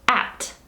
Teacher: at is a short vowel. It's not like two different vowel sounds coming in one syllable. It's just one vowel followed by a P, and then it's followed by another consonant that's not a nasal or a liquid.